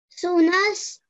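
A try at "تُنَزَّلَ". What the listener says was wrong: Remember, first letter Ta. We're joining that. Tunaz. Zala. Tunaz. Zala.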